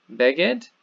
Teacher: It's a segulate noun, so the accent is on the first syllable here